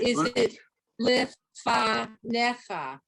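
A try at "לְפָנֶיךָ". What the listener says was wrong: Exactly.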